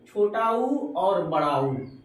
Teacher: स्वरों का उच्चारण में ओठ गोलाकार हो जाता है। यानी जो स्वर का उच्चारण करेंगे उसमें ओठ हो जाएगा आपका गोला। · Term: विवृत मुखी